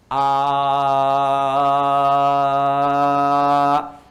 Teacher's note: kalau huruf hamzah, a dengan h itu satu makhraj, yaitu bagian kerongkongan bagian bawah di sini